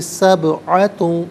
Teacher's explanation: سبعۃ میں با ساکن ہے لیکن حرف قلقلہ ہے، آواز لوٹتی بھی محسوس ہونی چاہیے۔